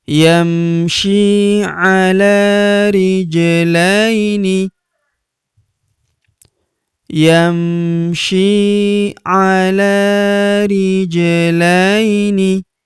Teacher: Huruf la kita ayun sekali karena terdapat ya sukun di depannya